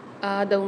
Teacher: آدم میں الف کے اوپر کھڑا زبر آ رہا ہے، اس کو 1 الف کی مقدار کھینچ کے پڑھیں گے۔